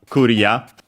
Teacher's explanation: As for its accent, is actually like in English because it's on the re, so yeah, clear, Korea, low, high, low, and yeah, clear in all the possible meanings of the word, practically.